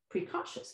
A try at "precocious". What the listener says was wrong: don't get stuck on aw. This can be other things. And it's not aw in this word. That's the word, precocious.